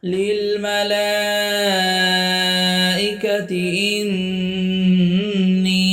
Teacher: ইন ওয়াজিব গুন্না, নুনের উপরে তাজদিদ। ইন নি জেরের বাম পাশে জজমালাইয়া, এক আলিফ টান।